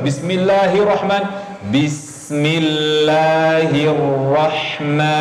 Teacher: Ma panjang dua harakat.